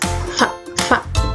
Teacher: bunyi labiodentals ini biasanya mengeluarkan huruf fa, di mana bibir ini menempel pada ujung gigi atas